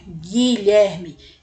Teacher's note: Ele nem é pronunciado, o U não é pronunciado, a gente vai direto pro I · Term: dígrafo